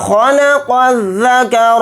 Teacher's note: خوا کو یہاں پر موٹا پڑھیں گے